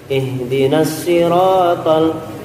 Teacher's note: dibersihkan dari ngirung kita, dari dengungan ketika baca ro. Karena banyak orang yang punya gaya ngomongnya itu ngirung, terbawa di ngajinya gitu.